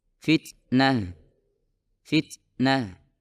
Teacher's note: ada suara yang sangat samar yang mengikuti huruf ta yang disebut sebagai hams HAM pada dasarnyaalah semburan kecil Udara yang dikeluarkan setelah mengucapkan huruf · semburan kecil Udara yang dikeluarkan setelah mengucapkan huruf dalam kasus ini yaitu huruf ta